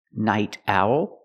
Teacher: we hear the T changed to a fast D